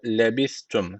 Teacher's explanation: s peltek ve ince